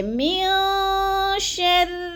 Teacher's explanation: من پہ ناک میں آواز لے جانی ہے، یعنی آواز کو چھپا کر پڑھنا ہے، اس کو کہتے ہیں غنہ، اخفا